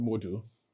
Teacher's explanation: I'm pronouncing the word modal to tell you that the letter A here is a schwa sound, okay? Which means that it doesn't take the R sound.